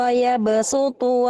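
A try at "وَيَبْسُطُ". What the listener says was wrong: Oke, diringankan shotnya jadi sin. Wa yabsu, wa yabsutu.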